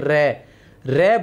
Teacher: प्रकंपित व्यंजन की बात करें तो र जो है प्रकंपित व्यंजन है, क्योंकि इसके उच्चारण में जीभ में कंपन होता है। जैसे र बोलते ही जीभ में कंपन होता है, इसलिए इसे प्रकंपित व्यंजन कहा जाता है